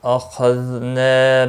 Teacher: نا الف مدہ ہے، ایک الف کے برابر کھینچ کر پڑھیں گے